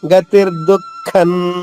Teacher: దుఃఖం అనకూడదు, పెదవులు కలవకూడదు మళ్ళా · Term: అనుస్వరం